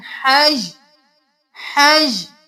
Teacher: सिर्फ हा के साथ या की आवाज आएगी। तनवीन गिर जाएगी और हा ज़बर या हज करेंगे।